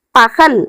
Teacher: ஆனா பகல் அப்படின்னு சொல்லும்போது ஹெச் போல ஒலிக்குது